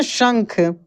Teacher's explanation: ये शंख, देखिए तालव्य श है, कैसे पढ़ेंगे? शंख, तालु से इसका उच्चारण निकलता है